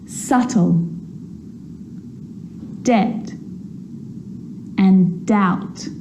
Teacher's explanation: So see, in all of those examples, my lips aren't closing and coming together to form the B sound. I'm just pronouncing the T.